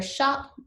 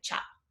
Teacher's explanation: for the sound sh, we'll often get a ch